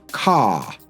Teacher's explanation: Either the vowel sound ends up being a bit longer, or it's replaced with awah sound. So car, we don't really pronounce this R. And the vowel just is quite long. Car, not car.